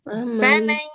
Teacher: Ini ada idgham, maka seharusnya dia keluar dari rongga hidung.